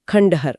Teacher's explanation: ड ट वर्ग से है। इसलिए बोलते समय जीभ अपने आप ऊपर जाती है और वह बिंदी आधा ण बन जाती है। तो शुद्ध रूप हुआ खंडहर। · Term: मूर्धन्य